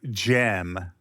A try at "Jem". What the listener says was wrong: It does sound like you're saying Jim and the holograms.